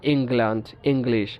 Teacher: কিছু কিছু ক্ষেত্রে এই ঙ এর সাথে একটা গ সাউন্ড থাকে